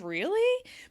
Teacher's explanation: You go up at the end, really? Because you want some more information. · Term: rising